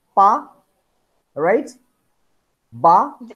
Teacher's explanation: At first, we stop the air, right? By closing our lips. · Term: explosion of air